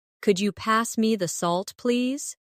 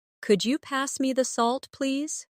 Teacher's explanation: Listen to the way my voice rises on Could you? and falls gently at the end.